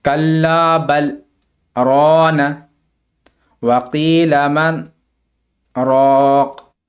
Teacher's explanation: یہاں پہ وقف کرنے کی صورت میں دو زیر نہیں پڑھا جائے گا، راقن سے راق پڑھا جائے گا